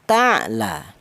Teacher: benar-benar ain ini keluar dari tenggorokan bagian tengah atau tengah tenggorokan · Di mana ain mati ini, huruf ain itu huruf yang keluar dari tenggorokan, atau yang lebih terkenal huruf halak, atau yang lebih terkenal lagi itu huruf idhar. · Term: idhar halki